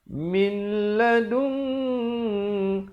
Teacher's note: idgham bila gunnah, masuk tanpa dengung. Jangan baca min lagi lah.